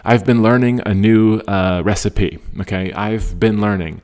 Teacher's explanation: So slight F sound and punch the been